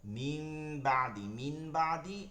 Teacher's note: নুনের উচ্চারণটাকে মিম দ্বারা পরিবর্তন ঘটাইছে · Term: ইকলাব